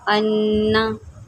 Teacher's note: नून के ऊपर तशदीद है, जब नून के ऊपर तशदीद होती है, ये तीन दंदान वाली शक्ल को तशदीद बोलते हैं, वहाँ गुन्ना करते हैं।